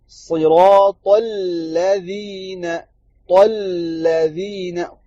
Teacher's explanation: پڑھتے ہیں یہ غلطی کرتے ہیں، لام کو موٹا کر دیتے ہیں، صراط الذین، الذین، یہ غلط ہے. لام پتلا ہے، اس کو پتلا رہنے دیں، موٹا نہ کیجئے